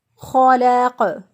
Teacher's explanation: وہ گلے کا حصہ جو کہ منہ کی طرف ہوتا ہے وہاں سے خو ادا ہوتا ہے ۔ خلق، قوف جو ہے وقف کی صورت میں ساکن ہوگا